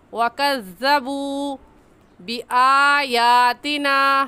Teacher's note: वाव साकिन से पहले पेश आ जाए तो वाव मद्दा कहलाता है और वाव मद्दा को एक अलिफ के बराबर खींच कर पढ़ेंगे, ना इससे कम और ना ही इससे ज़्यादा